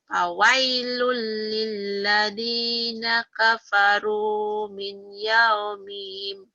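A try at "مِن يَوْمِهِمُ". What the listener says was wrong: Jangan min kan idgom nyamber. Mi yaumihim. Jangan dari mi. Miyaumihimul ladzi yu'adun. Miyaumihimul. Miyaumihimul. Ya, fawailul lilladzina kafaru min yaumihimul ladzi yu'adun. Min yaumihimul ladzi yu'adun. Min yaumihimul ladzi yu'adun. Miyaumihimul. Miyaumihimul.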